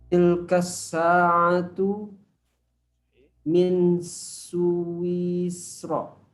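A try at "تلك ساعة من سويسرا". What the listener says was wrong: Ahsan.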